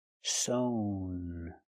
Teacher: the participle is sewn, with the long O sound